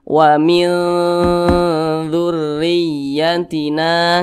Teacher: Didengungkan itu suaranya itu kita tahan atau kita panjangkan. Panjangnya itu 2 harokat atau kira-kira 2 ketukan.